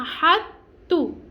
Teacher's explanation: پور ہم نہیں پڑھیں گے باریک تا کو پڑھیں گے